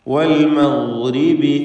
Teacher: മഗ്രിബി ഗൈനിന് തഫ്ഖീം കൊടുക്കണം.